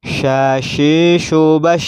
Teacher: Huruf shin di sini sifatnya yang pertama adalah hamas. Kita tahu hamas adalah ada hembusan nafas ketika melafadzkan huruf shin, yaitu suaranya nafasnya berdesis.